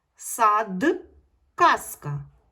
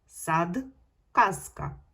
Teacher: дзвінкі приголосні звуки в кінці слова або складу вимовляємо дзвінко